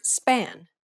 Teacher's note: this is the unaspirated version of the p sound as it occurs in the word span